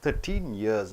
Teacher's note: Now you are not stressing on teen, you are stressing on 13 years.